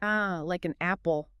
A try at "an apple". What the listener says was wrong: You don't say "an,". Apple. The "n" sound from "an" kind of jumps over and attaches to "apple." So it sounds more like an apple.